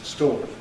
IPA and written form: stɔːk (stork)